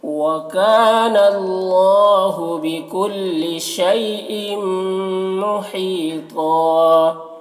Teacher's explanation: وقف کریں گے تو ایک زبر کے ساتھ الف پڑھیں گے